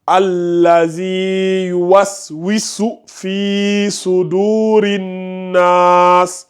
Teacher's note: Il n'y a pas de mad bil ya ici. Par contre, le fi ici, il a un mad bil ya. Donc, tu dois l'allonger un peu.